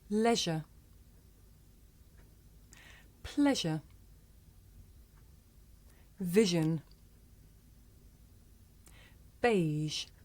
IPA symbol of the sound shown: ʒ